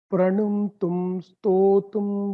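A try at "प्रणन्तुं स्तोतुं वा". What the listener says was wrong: Pranantum. It is not Pranu. Pranantum. So that happens, that tends to happen sometimes because we want to chant one letter as Mahaprana, inadvertently we interchange it with the previous letter or next letter.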